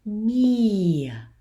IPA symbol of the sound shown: ɐ